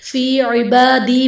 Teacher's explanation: फी इबादी में बा पर खड़ा ज़बर है जो कि अलिफ मद्दा के कायम मुकाम है, इसलिए इसे एक अलिफ यानी दो हरकत के बराबर खींच कर पढ़ेंगे